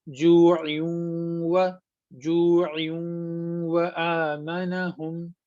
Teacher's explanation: हम इसे मिक्स करते हैं और आवाज को नाक में ले जाते हैं